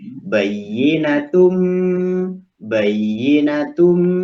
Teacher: Berarti bunyi tanwin itu dimasukkan pada bunyi mim. · tanwinnya dimasukkan kepada bunyi hurufnya, terus ada gunnahnya. Jadi bayyinatum, gunnahnya, tum, bunyi idghamnya masuk, maknanya daripada idgham kan memasukkan. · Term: idgham ma'al gunnah